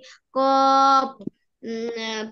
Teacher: জিহ্বার গোড়া তার বরাবর উপরের তালুর সঙ্গে লাগিয়ে